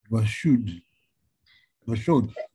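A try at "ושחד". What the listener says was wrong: Vashud. Very good. I mean, that's, as you can see, a very difficult word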